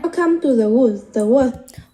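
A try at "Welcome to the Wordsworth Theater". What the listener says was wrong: Welcome. Welcome là nó không có trọng âm rồi. Welcome to the Wordsworth.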